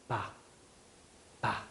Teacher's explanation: 입술이 두 개가 붙어 있다가 벌어진다는 걸 알 수 있죠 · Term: 파열음